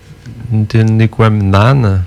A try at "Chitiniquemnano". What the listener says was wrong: Chitiniquemnan. il manque le U à la fin. Chitiniquemnano.